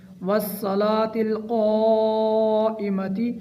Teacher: واو کو صاد کے ساتھ مضبوطی سے ملانا ہے اور قاف کے اوپر ماد متصل ہے، اس کو بھی 4 الف کا برابر لمبا کرنا ہے